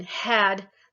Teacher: If you feel back where you're making that kind of sound in had, that's a glottal fricative.